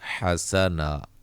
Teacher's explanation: وقف کی صورت میں 2 زبر کو الف مدہ میں تبدیل کر دیتے ہیں